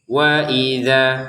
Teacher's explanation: Perhatikan harokat fathah bertemu dengan alif, kita panjangkan dua harokat.